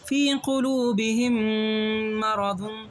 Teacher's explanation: میم ساکن کے بعد میم آئے تو غنہ کے ساتھ ادغام ہوگا